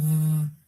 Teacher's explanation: It is our teeth and lips. So it is labiodental.